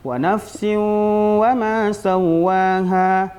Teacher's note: Karena di situ ada hukum idgham bi gunnah, tanwin berjumpa dengan huruf waw. Bacaannya yang benar walaupun kita membacanya agak cepat, wa nafsin wa ma sawwaha, tetap kita tahan di situ lebih kurang 2 harakat.